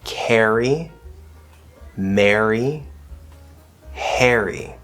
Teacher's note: all you have to do is use the third vowel e like bed